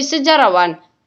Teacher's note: Dalam proses pengimbuhan akhiran wan pada dasar sejarah, maka fonem h pada dasar sejarah itu dilesapkan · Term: pelepasan fonem